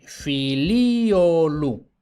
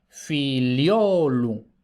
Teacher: Y ahora vemos que pasamos de 4 sílabas a 3. Y ahora, lo que antes era un hiato es un diptongo y vemos que también hay un cambio de acento, porque antes el acento estaba en el elemento I, ahora está en el elemento O.